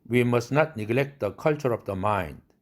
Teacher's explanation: 경계선 앞에 트가 파열음이니까 날아가죠